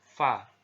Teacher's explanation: yaitu fathah dibaca Va ya Va ini huruf fadv ini ya diucapkan dengan menyentuhkan ujungnya dua gigi seri kita bagian atas dengan bibir bawah bagian dalam simpelnya seperti kita mengucapkan huruf f dalam alfabet gitu ya Va